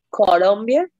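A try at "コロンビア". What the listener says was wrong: Ajá, en vez de la L va a ser R. R, suave, ¿no? La L la obviamos, ¿no? La cambiamos por R.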